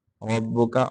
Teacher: रब्बुका रा के ऊपर रा का ज़बर है, इसको मोटा करेंगे , काफ को ज्यादा लंबा नहीं करेंगे, रब्बुका दुरुस्त नहीं है।